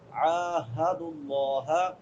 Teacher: کے بعد الف مدہ بھی ہے، اور بعد میں ہا ہے، بڑی والی ہا جو اقصی حلق سے ادا ہوتی ہے، حلق کے آخری حصے سے ، عاہد اللہ، ہا اور ہا ان میں فرق رکھنا ہے،